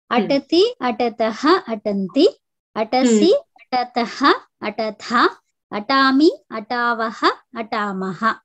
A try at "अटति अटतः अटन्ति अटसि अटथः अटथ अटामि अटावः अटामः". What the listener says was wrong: सम्यक्